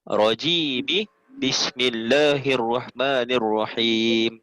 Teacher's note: Dekat rajim tu, dekat mi tu terus sambung.